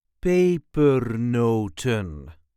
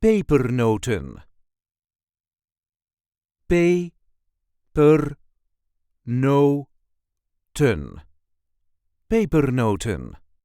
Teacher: There is a light emphasis on the first syllable.